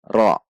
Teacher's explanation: Perhatikan saat ra bukan dengan membulatkan bibir, yaitu tidak dengan ro, namun ra. Meskipun tafhim, namun tidak dengan membulatkan bibir, namun dengan menegangkan pangkal lidah atau mengangkat pangkal lidah. Ra satu ketuk.